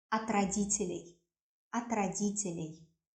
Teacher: We always pronounce ат, not от, because it is not stressed. We connect it with the next word and it sounds as one word